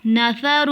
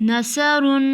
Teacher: سا کی بھی باریک ہوتی ہے اور سین کی بھی باریک ہوتی ہے، پر سا کی آواز نرم ہوتی ہے اور سین کی آواز سیٹی والی ہوتی ہے. جیسے نثر، سا کے ساتھ تھا نثر، سین کے ساتھ نثر.